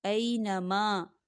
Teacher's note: الف مدہ ہو رہا ہے ماں پر، تو ہم اسے دو حرکت کے برابر کھینچیں گے۔